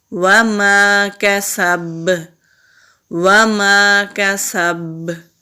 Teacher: سین کے اوپر بھی زبر ہے، با کے اوپر زبر ہے، آگے وقف کی علامت ہے تو با پر سکون لے کے آئیں گے تو با پر کلکلا ہوگا۔